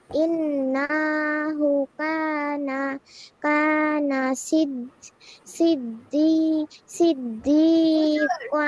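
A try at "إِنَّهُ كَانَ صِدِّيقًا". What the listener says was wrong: নাতে টান দিয়েছ, ইন্নাহু কানা টান নেই।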